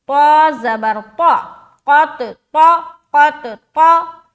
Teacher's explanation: قاف اور طا یہ دونوں موٹے حروف ہیں، تو ان کو ہم موٹا کر کے نکالیں گے